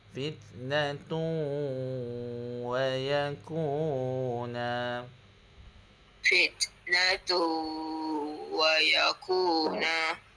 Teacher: Sengau lagi. Fitnatun naik ke hidung.